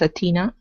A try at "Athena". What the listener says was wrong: give me a good th on Athena instead of atina